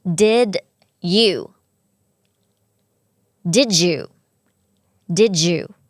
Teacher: DidตัวDดเด็กเนี่ยนะคะมันเป็นเสียงสั่นพอเราแทรกเสียงเข้าไปมันก็ต้องสั่นต่อ